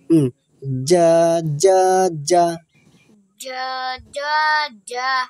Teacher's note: জিব্বার মধ্যখান তার বরাবর উপরে তালুর সঙ্গে লাগে